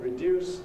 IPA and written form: rɪˈdjuːs (reduce)